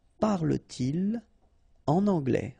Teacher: Okay, so no liaison after your pronoun.